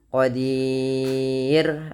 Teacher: Ro-nya di sini dibaca dengan tipis, tidak dibaca dengan tebal.